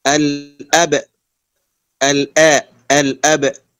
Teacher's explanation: هنا نحقق همزة القطع مع قلقلة الباء